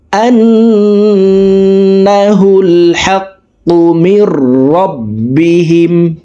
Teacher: এখানে ওয়াজিব গুন্না 3 সেকেন্ড পরিমাণ গুন্নাহ করে পড়ব।